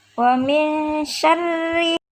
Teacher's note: ada ro kasroh, maka hukum bacaannya adalah ro tarqiq, dibaca tipis